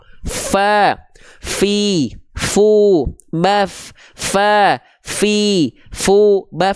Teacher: itu dia mengalir nafasnya Bang contohnya Ini Bang contohnya huruf Fa huruf Fa dia punya sifat hams Bang tapi dia mengalir